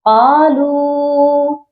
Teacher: واو مدہ ہے، اس کو ہم نے ایک الف کے برابر لمبا کرنا ہے